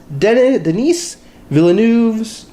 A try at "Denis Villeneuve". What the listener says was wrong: It's Denis. You don't pronounce the S.